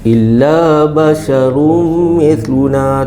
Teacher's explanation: tanwin ya bertemu dengan mim idgham maal gunah. Masukkan dan dengung.